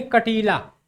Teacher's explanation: कटीला कहने पे नाक से भी हवा निकलती है और मुंह से हवा निकलती है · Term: अनुनासिक